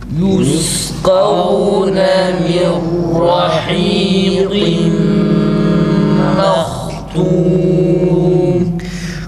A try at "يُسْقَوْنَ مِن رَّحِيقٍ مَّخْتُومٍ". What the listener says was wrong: Kalın harfleri esreli halinde üstünlü halindeki gibi mübalağa yapmıyoruz arkadaşlar. Mirrahiqim qim demeye gerek yok. Mirrahiqim. Çünkü fethalı harekelerde dikkat ederseniz hatırlarsanız demiştik kalın harfe tabi olan elif var. Fakat burada öyle bir şey olmadığı için mirrahiqim demeye gerek yok. Sade bir şekilde mirrahiqim.